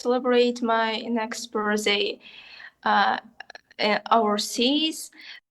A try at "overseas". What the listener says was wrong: Just that the V is very soft.